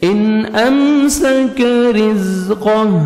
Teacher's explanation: را کے نیچے زیر ہے, را کو باریک کر کے پڑھیں گے